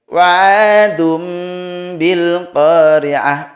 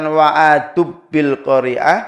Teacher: Iqlab di sini ada mim kecil ya. Dirubah dibalik menjadi mim. Wa 'adum bil qari'ah, bukan wa'adub bil qari'ah.